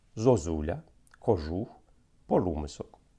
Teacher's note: укання не стосується ненаголошеного о